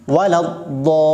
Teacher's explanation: Do-nya panjangkan 6 harokat, kemudian masuk ke dalam lam yang bertasydid dengan datar. Dallin. Jangan dinaikkan lagi. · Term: mad lazim mustaqal kalimi